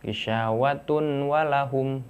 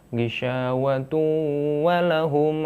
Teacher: Karena ini bacanya idgham, si tunnya ini dimasukkan ke waw. Jadi ghishawatu tu, ghishawatu walahum adzabun azim.